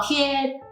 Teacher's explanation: 可是国语的第一声是很高的音啊，是5的那么高